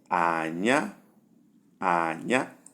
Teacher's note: Number 3, we have low and flat, and the sound is Anya, Anya is sticky.